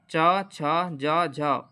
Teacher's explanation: स्पर्शी तो हैं, स्पर्शी के साथ साथ भी संघर्षी व्यंजन है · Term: स्पर्श संघर्षी व्यंजन